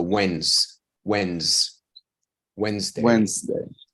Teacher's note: this word is read without the D and without the e